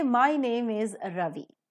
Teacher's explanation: fall down So when you say my name is Ravi so you say my name is in one pitch and when you say Ravi because you are ending the sentence with the full stop you just fall down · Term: falling tone